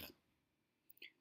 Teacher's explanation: the French R is pronounced towards the back of the throat. And so to try to pronounce this French R, you should just try saying the R while gargling. · Okay, so looking at the French R, in certain parts of the country, the French R is trilled, and that means that it's rolled, such as the Spanish R. But in the majority of the rest of the country, including the capital Paris, they use the guttural R, R. So the French R is pronounced towards the back of the throat.